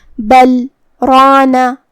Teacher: ہم کلمت بل پہ روکیں گے اور بغیر اپنی سانس لیے کلمت رانا پڑھیں گے. بل رانا ہمیں اپنی سانس یہاں بالکل نہیں لینا ہے. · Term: سکتہ